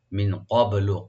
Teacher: নুন সাকিন এখানে আমরা ইখফা করব, লাইট গুণা করব। মিন ক্বাবলু, কফটাকে রাইট দিয়ে একটু ডিপ করে বাতে একটু হালকা ইকু করব, ক্বাবলু।